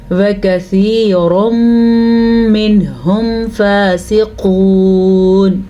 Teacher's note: فا کے اوپر کھڑی زبر ہے تو لمبا کرنا ہے کھڑی زبر کو، قاف کو موٹا پڑھنا ہے اور ساتھ ساتھ واو مدہ بھی ادا کرنا ہے کیونکہ واو ساکن سے پیچھے حرف پہ پیش ہے.